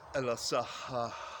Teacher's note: Western language speakers don't have the breathing correct to pronounce these two hard H's separated by an aleph.